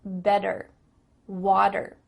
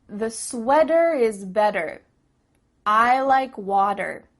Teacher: in American English a t that's between two vowel sounds it doesn't always have to be a vowel but between two vowel sounds is going to change to a d